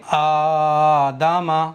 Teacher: دال اور میم کو تھوڑا سا بھی نہیں کھینچا ہے